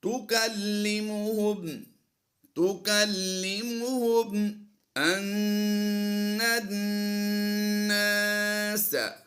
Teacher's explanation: نون مشدد دونوں ہیں، دونوں ہی میں غنہ کریں گے